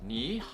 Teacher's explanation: just remember this rule every time you see 2/3 tones so all we have to do is adjust the first third tone and change it into a second tone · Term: third tones change tone